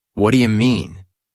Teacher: In real conversation, it often becomes what do you mean? The do you becomes dia or ja.